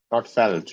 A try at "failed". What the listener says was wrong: A. A. You have to use the A sound.